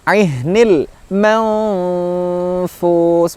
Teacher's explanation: huruf nun sukunnya disamarkan pada huruf fa · Nah, ketika mendengungkan atau menyamarkan maka mulut berusaha pada makhrajnya huruf fa. Makhraj huruf fa gigi seri atas bertemu bibir bawah. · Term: huruf ihfa